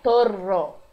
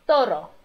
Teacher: Um R só vibra rapidamente na língua, né? A língua vibra lá no céu da boca.